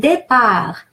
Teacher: And départ, A is pronounced A, like in the word egg, because it has an accent, and R, well, it's pronounced R because it's normal to pronounce here, and it's a bigger discussion to explain why. But final T, as you notice, is silent.